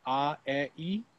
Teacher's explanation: they don't do a lot of shaping with their vowels so it's really primarily changing the tongue position between ah e and then a little bit of shaping for o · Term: georgian vowels